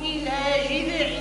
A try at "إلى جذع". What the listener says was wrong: مش جذع، الذال لا قلقلة في الذال، إلى جذع، سكن الحرف، جذع النخلة.